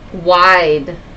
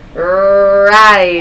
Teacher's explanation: I heard kind of a W sound. Let's try a good strong R in the back of your throat.